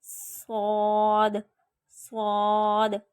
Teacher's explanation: صاد موٹا حروف بھی ہے اور صاد سیٹی والا بھی ہے، تو ہم اس کو پڑھتے وقت دونوں آوازیں نکالیں گے، اس کو موٹا بھی کریں گے، اس میں سیٹی کی بھی آواز نکالیں گے